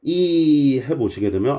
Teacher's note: 이게 이 모음 때문이에요. 이 모음은 전설 모음이자 고모음으로서 발음이 좀 힘듭니다. 이 해보시게 되면 오 이런 거에 비해서 조금 목이 뻑뻑해지고 힘들다는 걸 아시게 돼요.